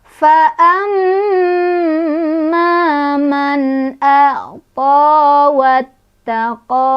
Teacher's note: ada gunnah musyaddadah karena ada mim yang bertasydid. Cara bacanya berdengung